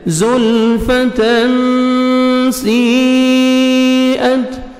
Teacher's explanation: تنوین کے بعد دیکھیں حروف اخفاء میں سے سین ہے، آپ نے نوز میں ساؤنڈ لے کے جانا ہے